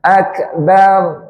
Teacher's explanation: Rnya lidahnya ditarik sedikit ke belakang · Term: ro